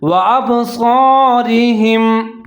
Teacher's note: وَأَبْصَارِهِمْ صاد زبر صا, صا کو موٹا پڑھنا ہے. آگے رے کے نیچے زیر ہے تو اس کو موٹا نہیں پڑھنا ہے, اس کو باریک پڑھنا ہے